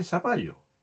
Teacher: El chileno dice zapallo, vale decir, lo pronuncia como S. A eso se le llama ceseo, puesto que lo pronuncia con S.